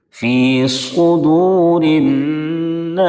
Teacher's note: صاد کو مکمل پر پڑھیں کیونکہ صاد حروف مستعلیہ کے ساتھ حرفوں میں سے ہے. صاد کو اگر پر نہیں کریں گے تو سین اور صاد میں کوئی فرق نہیں رہ جائے گا. · فی صدور الناس، دونوں سین کے بعد صاد ہے، دونوں سین کے بعد صاد کو ادا کرنا تھوڑا سا مشکل ہوتا ہے، بعض مرتبہ لوگ فرق نہیں کر پاتے ہیں سین اور صاد کے درمیان۔ سین پڑھنے کے بعد صاد کو مکمل پر کریں گے تاکہ دونوں میں علیحدگی ہو سکے. فی صدور الناس، صاد کو مکمل پر پڑھیں کیونکہ صاد حروف مستعلیہ کے ساتھ حرفوں میں سے ہے.